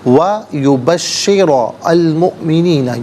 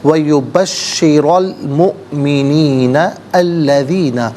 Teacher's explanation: را پر زبر ہے، را کو پر کر کے پڑھیں گے، مؤمنین میں حمزہ ساکن ہے، جھٹکے کے ساتھ پڑھا جائے گا